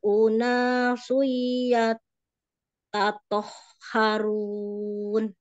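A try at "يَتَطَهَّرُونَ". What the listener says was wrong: Ya, gak ada tasdidnya ya di ya toharun itu. Tadi ada tasdid sebenarnya. Ya tato.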